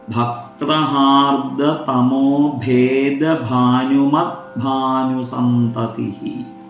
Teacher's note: വിസർഗമാണ് അവസാനം. സന്തതി അല്ലെങ്കിൽ സന്തതിഹി എന്ന് ഉച്ചരിക്കുക.